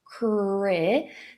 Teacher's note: Então começa com cre, e aí para esse R, a língua vai lá para trás, bem tensa, e os lábios ficam arredondados. Cre, essa vogal é o short I, aquele som que é muito parecido com o nosso E com acento circunflexo.